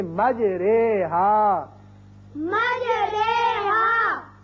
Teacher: اب قرآن پاک میں ایک ایسا لفظ ہے، اصل میں یہ ہے مجراہا، اور یہاں امالے کا قاعدہ یہ ہے کہ ہم زبر کو زیر کی طرف مائل کر کے پڑھیں گے